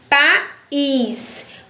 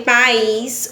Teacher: Por exemplo, no nome país. Quando eu falei país, o i soou mais forte. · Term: sílaba tônica